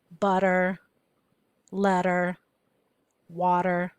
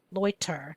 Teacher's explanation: in spoken English that T becomes a flap D